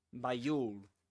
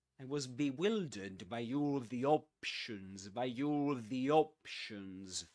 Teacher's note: you can link the word by to the next word with this sound with this y sound